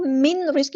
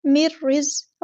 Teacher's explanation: ہے، تو اس لفظ کو من رزق نہیں پڑھنا، مر رزق، را ہم نے یہاں باریک پڑھنا ہے اور زا کو سختی سے ادا کرنا ہے ، قاف ہمارا یہاں پہ ہیوی لیٹر ہے پورا ادا کریں · ادغام بلا غنہ ہو رہا ہے، ادغام کامل ہو رہا ہے ، تو اس لفظ کو من رزق نہیں پڑھنا، مر رزق،